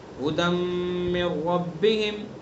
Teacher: بہرحال ھدم میں ادغام ناقص ہے، غنہ کریں گے